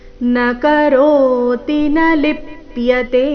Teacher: ನ ಕರೋತಿ ಈ ರೀತಿ ತೀನ ದೀರ್ಘ ಮಾಡಬಾರ್ದು, ರಸ್ವ ದೀರ್ಘಗಳ ಮೇಲೆ ಗಮನ ಕೊಡಬೇಕು. ನ ಕರೋತಿ ರೋ ದೀರ್ಘ, ನ ಲಿಪ್ಯತೆ ಕೊನೆಯತೆ ದೀರ್ಘ. ನ ಕರೋತಿ ನ ಲಿಪ್ಯತೆ ಲಿ ಮೇಲೆ ಆಘಾತ ಲಿಪ್ಯತೆ.